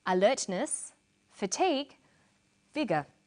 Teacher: we put commas where she uses pauses, and we use intonation to separate the items in a list